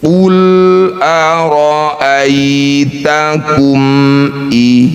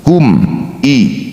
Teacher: Mim sukun bertemu hamzah disebut bacaan izhar syafawi. Bunyi mim baca jelas tidak usah dengung.